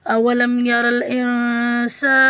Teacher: لام کو میم سے ملائیں گے